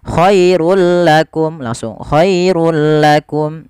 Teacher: Awalnya khairun, ketika bertemu lam langsung dimasukkan ke huruf lam tanpa ada penahanan. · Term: Idgham bila gunah, idgham bila gunnah